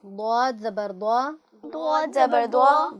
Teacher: گا، منہ بھر کے جیسے ہم اس کو ادا کرتے ہیں۔ آپ کی زبان کی کروٹ بائیں جانب کی اوپر کی 5 داڑوں سے متصل ہوگی